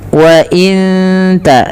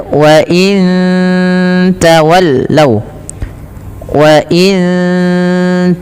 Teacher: ketika nun mati bertemu ta lagi, ada bacaan ikhfa hakiki, samarkan nunnya ke ta.